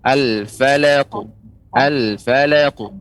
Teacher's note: Untuk qaf dia lebih tebal. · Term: huruf qaf